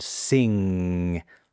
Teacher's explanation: That nasal sound, sing, always voiced.